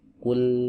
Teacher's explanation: huruf lam wajib dibaca tipis, tidak boleh dibaca tebal. Nah, untuk menyempurnakan ketipisannya, maka posisi bibir itu tidak boleh ada di depan.